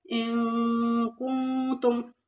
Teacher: نون ساکن اور اس کے بعد حروف اخفا کے 15 حروفوں میں سے کاف آ رہا ہے، تو یہاں پر اخفا مال غنہ ہوگا۔ کنتم میں نون ساکن کے بعد حروف اخفا کے 15 حروفوں میں سے تا ہے، تو اخفا مال غنہ ہوگا، ان کنتم صادقین۔